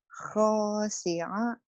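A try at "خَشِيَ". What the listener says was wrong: Pendek, Bu.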